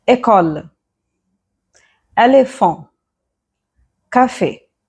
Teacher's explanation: if this E accent aigu is at the end of the word, it's going to give a lengthier sound.